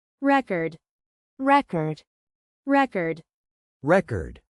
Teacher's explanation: As a noun, the stress is on the first syllable, re chord. Record.